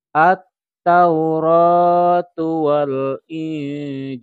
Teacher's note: Ini diwakafkan sehingga lam menjadi sukun